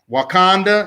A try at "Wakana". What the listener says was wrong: Wakana. No, there's no D in there. Wakana.